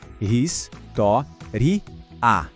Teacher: Agora a palavra tem quatro sílabas e a sílaba tônica, tó passou a ser a antipenúltima. [música] Isso transforma a palavra numa proparoxítona.